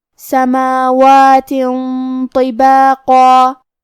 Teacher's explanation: ہمیں تنوین کو چھپاتے ہوئے اور غنہ کے ساتھ یہ حکم کو ادا کرنا ہے. کیونکہ تو حروف التفخیم میں سے ہے لہذا ہمیں غنہ کو بھاری آواز میں ادا کرنا ہے. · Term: حروف الاخفاء